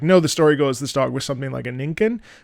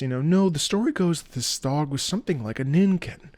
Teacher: a little bit more learned, a little bit more educated, slightly lower in the throat